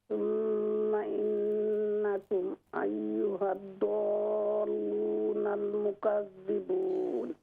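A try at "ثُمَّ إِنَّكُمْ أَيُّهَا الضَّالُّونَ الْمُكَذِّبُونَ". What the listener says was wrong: ہاں جی یہ ضاد لمبی ہوگی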